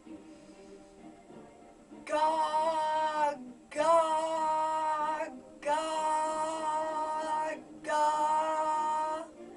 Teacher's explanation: It's really at the back of the throat. And you can feel the tongue rise up to the back. Rather than go up like that, it goes, sort of it curves up but towards the back.